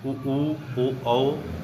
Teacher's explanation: ऐसे स्वर जिनके उच्चारण के समय हमारे ओष्ठ वृत्ताकार, वृत्त के आकार पर हो जाते हैं, उन्हें वृत्ताकार स्वर कहते हैं। जैसे उ, ओ, औ, ये वृत्तमुखी स्वर हो जाएंगे।